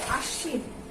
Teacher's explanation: আমরা এই যে তালব্য স এর সঙ্গে ব আছে, এই বটা উচ্চারণ করছি না, কিন্তু আমরা তালব্য স দুইবার উচ্চারণ করছি।